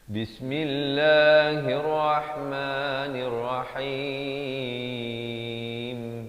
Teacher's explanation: Mestilah Bismillah, dan lafz jalalah dibaca nipis.